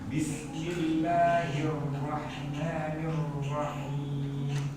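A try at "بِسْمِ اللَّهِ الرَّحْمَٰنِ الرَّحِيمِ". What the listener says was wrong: Sinnya jangan syiddah, alirkan saja. Bismillah. Ha sama sin dialirkan. Bismillahirrahmanirrahim. Ya, masih yang rohnya ya kan. Dibiasakan jangan maju nggih.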